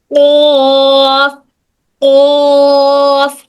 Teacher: जब आप कौफ बोलते हैं तो गले में हल्की सी वाइब्रेशन महसूस होती है।